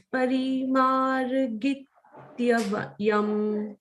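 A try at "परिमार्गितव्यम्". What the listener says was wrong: But Tyavyam you are saying Tavyam. Git nahi. Parimargitavyam. Don't say git. Parimargitavyam. Parimargitavyam. You say git. Parimargi, you stop there. Tavyam, you say. Tavyam.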